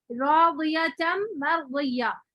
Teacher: را ساکن ہے موٹا پڑھیں گے